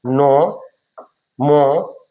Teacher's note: ऐसे वर्णों का उच्चारण करते समय ध्वनि नाक से निकलती है।